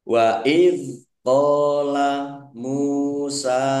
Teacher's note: sukun bukan qalqalah. Jangan dipantulkan.